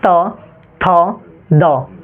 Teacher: त का उच्चारण स्थान जबान को है ना कहां लगाएंगे बोलिए दात में लगाइए · कौन सा व्यंजन, दंत व्यंजन, यानी दांत से निकलता है